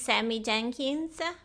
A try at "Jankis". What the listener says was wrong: It's Jankis. No N at the end. There's a tattoo where you can see how it's spelled. Jankis. Remember Sammy Jankis.